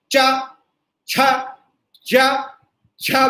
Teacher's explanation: जब हम च छ ज छ बोलते हैं तो हवा नीचे से आती है और पीछे जीभ ऊपर की ओर उठती है तालु की ओर, और वहां पर हवा टकराती है सीधी, और फिर इधर को रुककर अवरुद्ध होकर टकरा कर आती है, तब चा छा जा झा की आवाज आती है। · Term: चवर्ग